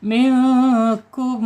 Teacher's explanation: ikhfa hakiki dibacanya samar ditahan dua harakat